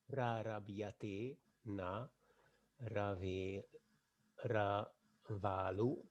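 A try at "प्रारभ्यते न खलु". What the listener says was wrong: Not Ravalu, it is Kalu, one word. Ka. Rava will be having some space between them. Suppose if it is Ra, I mean Repa and Kara is.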